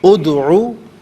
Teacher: دال ساکن تو ہے، لیکن دال حرف قلقلہ ہے، آواز لوٹتی ہوئی محسوس ہونی چاہیے، ادعو نہیں، ادعو دال ساکن میں آواز لوٹتی ہوئی محسوس ہو۔